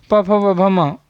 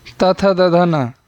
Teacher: प फ ब भ म ओष्ठ, त थ द ध न दंत।